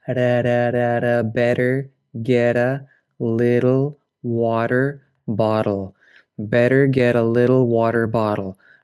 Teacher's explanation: it's a flap or tap. That's like a light d.